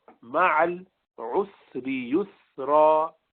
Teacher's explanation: سین نرمی والا ہے تو لمبا ہوا تھوڑا سا